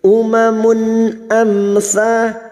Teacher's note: mim sukun bertemu sa, idhar safawi, mim sukun dibaca jelas tanpa mendengung